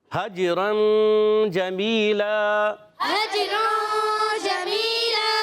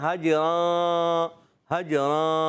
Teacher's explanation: नाक में आवाज ले जाते हैं नून को छुपा लेते हैं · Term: गुना